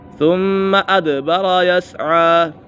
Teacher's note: ثُمَّ میم مشدد ہے، میم مشدد میں ہمیشہ غنہ ہوتا ہے، دال کے اوپر کلکلہ ہو رہا ہے، حروف کلکلہ 5 ہیں، قاف، طا، با، جیم اور دال۔